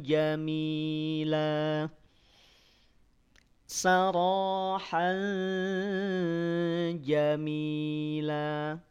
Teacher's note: karena wakaf jadi Jamila ya dibaca la panjang dua harakat jika berhenti kena Mad iwad